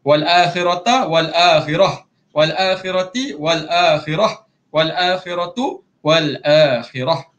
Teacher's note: Kalau wal akhiratu, wal akhirah juga. Tak kisah ta marbutah ni, di baris apa sekalipun, kalau kita berhenti dekat situ, jadikan ta tu jadi huruf ha.